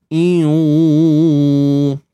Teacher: Waktu kita sebut iu, kita dah masuk dah kat makhraj waw tu, dah muncung bibir dah.